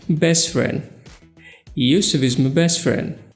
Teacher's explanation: For example, in a sentence, best friend, the word best ends in a consonant plus t sound and the next word starts with a f, which is a consonant sound. So to make it sound more fluent and natural, we should remove the t and say best friend